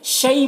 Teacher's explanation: شی میں جو یا ہے یہ یا لین ہے، اسے نرم آواز کے ساتھ جلد پڑھنا ہے